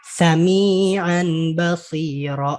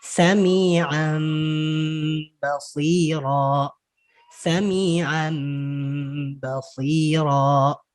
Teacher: Berubah bunyi nun mati atau tanwinnya menjadi mim. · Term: Iqlab